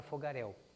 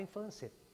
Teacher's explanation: no final da palavra fogaréu há um ditongo porém um ditongo decrescente e não ditongo crescente como nós temos na palavra infância